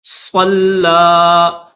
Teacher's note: صلی تھوڑا سا کھینچیں گے اس لام کو، لام کے اوپر کھڑا زبر ہے تو اس وجہ سے تھوڑا سا کھینچیں گے۔